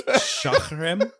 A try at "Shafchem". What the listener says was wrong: No, there's no R in it. You, you put an R in it a few times.